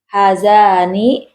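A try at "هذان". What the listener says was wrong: Haknya panjang. Haknya panjang. Itu kenapa panjang? Karena dia isim isyarah itu hadza. Walaupun pendek ya. Di Quran pendek, tapi dibaca wajib panjang. Bacanya wajib panjang. Hadzani.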